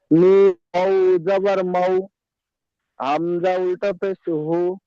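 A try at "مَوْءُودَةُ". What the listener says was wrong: হু না, উ। হামজা উল্টা পেশ উ।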